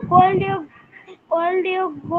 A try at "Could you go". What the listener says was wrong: না, এটা কোড। হ্যাঁ, কি মুশকিল, এটা কোড না বাবা, এটা খুড। খুড, এল এর উচ্চারণ হবে না, খুড হবে, খুড।